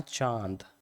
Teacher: मुंह भी खोलेगा चांद और नाक से भी बोलना है। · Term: अनुनासिक